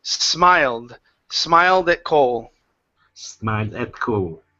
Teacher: Let's go to the S sound here. Okay, instead of smiled with a Z, it's unvoiced S.